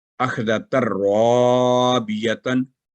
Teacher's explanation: تا مربوطہ کے تن جو تنوین ہوتی ہے وہ نون ختم ہو جائے گا. اخذت الرابیتن، تو یہ ہوگا اس کا تلفظ بغیر غنہ کے.